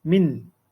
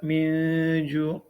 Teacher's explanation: Izhar ni kita baca secara jelas. Bunyi nun tu jelas.